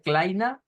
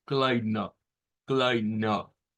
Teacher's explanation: es una A media, es decir, no es la A nuestra que va hacia adelante. Si nosotros hacemos la A nuestra, es esta.